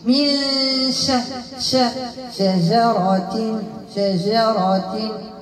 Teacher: إخفاء بغنة مرققة، ونجيب تفشي في الشين